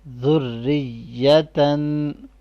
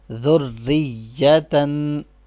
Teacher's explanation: Next one ذال را ضمہ ذر را کسرہ ری ذری یا فتحہ یا ذریہ تا فتحتین تن ذریتن. یہ ذرا سختی سے پڑھنا ہے کیونکہ را کے پاس بھی تشدید ہے اور یا کے پاس بھی